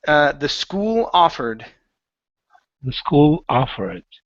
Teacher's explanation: Take that L, move it over to the word offered.